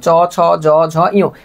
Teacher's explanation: তালব্য, অর্থাৎ তালু থেকে উচ্চারণ হয়